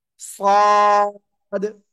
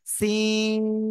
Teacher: সদ, মোটা আওয়াজে উচ্চারণ হবে এটা, আর এটা চিকন আওয়াজে, সিন